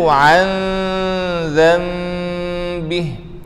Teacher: Hujung lidah tidak menyentuh bumbung di langit atas. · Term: hukum ikhfa